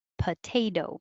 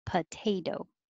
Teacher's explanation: So the second T sounds like a D